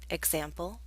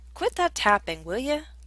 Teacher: also informal is a tag question will you with a request it's often pronounced as willya